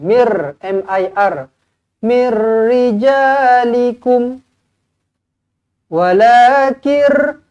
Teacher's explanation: Nun kosong bertemu dengan ra, bila jumpa dengan ra tak payah dengung, masuk sahaja.